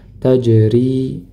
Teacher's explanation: Huruf jim ketika sukun maka dipantulkan meskipun pantulnya tidak begitu kuat ya karena di tengah bacaan tajri ya sukun sebelumnya kasrah maka dibaca panjang dua harakat